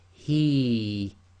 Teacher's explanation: the ya goes sakin, so effectively it becomes the long vowel kasra ya, so this becomes he, too long.